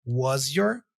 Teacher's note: This combination here of S and Y can be pronounced like this: was your. So the S for was here has a Z sound, okay? Was, and then you just join the Z sound with the your word, was your.